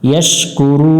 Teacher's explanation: শেষে তিন আলিফের টান দেব